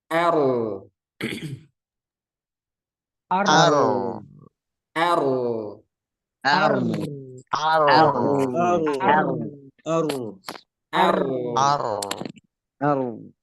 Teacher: jadi r-nya tebal a-nya tipis Nah itu harus beda jangan tebal semua jangan o er Nah itu salah liat semuanya R Ar r